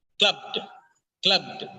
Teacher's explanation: The last sound, b and d, there should not be a vowel sound in between b and d. It should be very sharply connected.